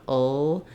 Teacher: It's kind of a dark L, which means it has a little bit of a schwa sound before it. The back of my tongue is down, ul, in that schwa position, while the front of my tongue lifts, oil, oil.